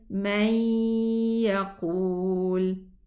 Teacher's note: the noon merged into the ya while it left its ghunna sound behind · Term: idgham naqis